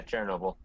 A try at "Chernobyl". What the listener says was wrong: Did you call him China Bull? Okay, it sounded like you called him China Bull.